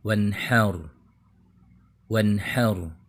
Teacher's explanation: Bunyi N di suku kata wan dibaca jelas. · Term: izhar